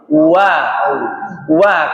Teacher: kalau jenengan enggak majukan mulutnya pasti wnya enggak keucap pasti jadinya a Wa itu pasti maju mulut. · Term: huruf wau